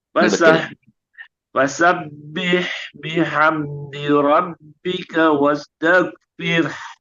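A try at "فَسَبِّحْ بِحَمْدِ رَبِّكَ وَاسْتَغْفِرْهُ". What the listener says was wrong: Bagus, tapi wasnya yang buru-buru mengalir dulu. Wastaghfir. Nah, tapi hanya bukan hak besar, kecil. Besar.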